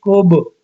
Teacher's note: کیونکہ با ساکن ہے تو اب اس کے اوپر قلقلہ ہوگا